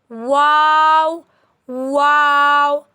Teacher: दोनों हंठ गोल करके आवाज निकाली जाती है। लेकिन हंठ मुकम्मल तौर पर बंद नहीं होने चाहिए। वाओ वाओ वाओ is pronounced from rounded lips. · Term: वाव